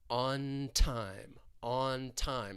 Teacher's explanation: Your tongue is going to be up behind your top front teeth, but we're going to stop the air, and then we're going to release right in to that T in time, that true T. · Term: coarticulation